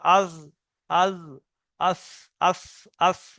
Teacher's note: জিভের আগাটা সামনের উপরের দুই দাঁতের আগার সাথে লেগে উচ্চারণ হবে।